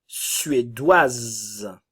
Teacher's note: Suédois, le S ne se prononce pas, nous avons le son WA. Suédoise, nous avons le son WA et le S se prononce. Le E ne se prononce pas.